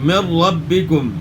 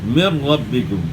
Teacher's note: نون ساکن کے بعد حرف را ہے تو یہاں ادغام بلا غنہ ہوگا